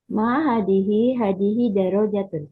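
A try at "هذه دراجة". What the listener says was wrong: Ya, Masya Allah, tabarakallah ya. Bagus Bu, Masya Allah.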